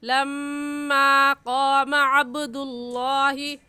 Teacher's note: ہم اس میم الف ما کو صرف ایک الف کے برابر کھینچیں گے · لفظ اللہ سے پہلے پیش ہے اس لیے لفظ اللہ کو پر کر کے یعنی موٹا کر کے پڑھیں گے